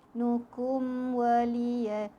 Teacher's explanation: Mim sakinah jumpa dengan waw, izhar syafawi juga, bacaannya jelas, tak perlu dengung.